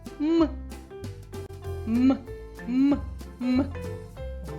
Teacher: горло дзвенить ми відчуваємо вібрацію голосових зв'язок тож звук м приголосний дзвінкий позначатимо його однією рискою чудово Це буква М будиночок для звука